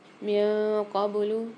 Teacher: نون ساکن کے بعد قاف آ رہی ہے، یعنی یہاں پر ہم غنہ کر کے پڑھیں گے